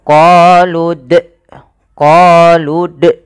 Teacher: Ada bunyi hamzah pada lafaz d-nya. Padahal dia tidak boleh menambahkan hamzah ketika kita melafalkan qalqalah.